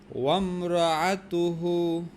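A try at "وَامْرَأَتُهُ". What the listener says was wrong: হলো না। হ্যাঁ, হামজার আইনের মধ্যে পার্থক্য করতে হবে। আমরাআতুহু, এই যে যখন তুমি আইন কবা গলাতে চাপ দিতে হয়, আর যখন হামজা কবা গলাটা একটু ছাড়ে দিতে হয়। মানে তোমার মুখটা বুদ্ধি করলেই মনে করো তুমি গলার নিচে যা পৌঁছবা। ওয়ামরাআতুহু ওয়ামরাআতুহু।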